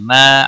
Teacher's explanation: ما الف مدہ ہے ایک الف کے برابر کھینچ کر پڑھیں گے